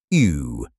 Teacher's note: U with umlaut, sounds like E with rounded lips